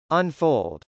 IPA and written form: ənfˈoʊld (unfold)